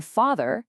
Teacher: In father, it's that open ah sound.